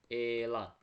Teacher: Yaxud da elan sözündə, elan sözündə mən e-i uzadıram. Elan vurğu isə aın üzərindədir.